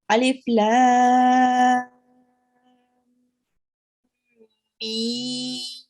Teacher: Okay, so what we do, we will read this as Alif Lam Mim, but we will apply this extra long elongation here, and then when we are reading the Lam, we will join onto the Mim, and we will join onto it as if we are joining with a tashdid. So we will press on it when we are joining. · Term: Mad Kabir